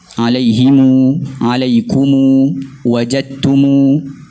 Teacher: Kerana itu memang loghat mereka, iaitu loghat kita baca mim jamak tu secara silah. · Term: silah mim jamak